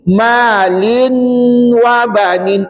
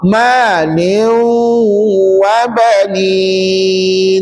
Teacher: jadi tanwin tu dimasukkan bacaannya ke dalam huruf wau